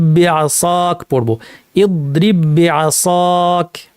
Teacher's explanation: কিন্তু এখন যেহেতু দুইটা বা সংযুক্ত হয়ে তাসদীদযুক্ত একটি বাতে পরিণত হয়েছে, কাজে বায়ের কলকলা আর থাকবে না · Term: ইদগামুল মিসলাইন